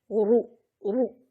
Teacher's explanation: را پر پیش ہو تو اس کو موٹا پڑھیں گے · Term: تفخیم